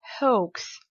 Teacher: Donc là, on est vraiment loin de la prononciation française qui était hawks. Parce que non seulement en anglais, le H, on le prononce, mais également le OA, c'est une diphtongue. Une diphtongue, c'est une association de deux voix, de deux sons.